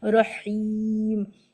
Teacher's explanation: ٹھنڈی سانس کے ساتھ، مطلب ایک ایئر فلو باقی رہے، مڈل تھراٹ سے آپ ادا کریں